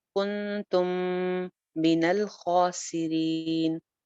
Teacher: میم کے بعد میم ہے، یہاں پہ پھر گننا ہو جائے گا، ادغام ہو جائے گا